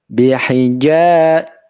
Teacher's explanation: Him, mim sukun, tapi setelahnya huruf ba bihija ya. Maka kalau kita menjumpai mim sukun yang diikuti huruf ba, hukum bacaannya adalah ikfa syafawi ya, didengung ya, jangan dibaca cepat. · ja tengah lidah 2 harokat saja fathahnya